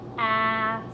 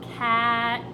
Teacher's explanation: when we say a word with a short A, we hear ah